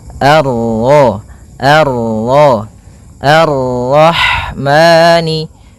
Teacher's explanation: ini bertemu dengan huruf ro yang berharakat tasydid maka rnya kita baca dengan tafkhim · Pada bacaan Ar-Rahmani di sini ada alif dan lam di awal bacaan, maka kita baca dengan bacaan al sebagaimana yang di atas, al. Kemudian ini bertemu dengan huruf ra yang berharakat tasydid, maka ra-nya kita baca dengan tafkhim, ar-ra, ar-ra, ar-rahmani.